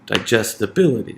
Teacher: That means that it is that syllable that receives primary stress in digest will receive secondary stress because primary stress is already on the bility